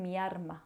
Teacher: se va a pronunciar una R en lugar de la L.